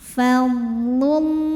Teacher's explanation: Kemudian ada hukum alif lam yang dinamakan dengan alif lam syamsiyah. Karena alif lam menghadapi huruf syamsiyah yaitu huruf lam, maka cara bacanya alif lam tidak perlu dibaca ya, atau diidghamkan langsung ke lam berikutnya. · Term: idgham syamsi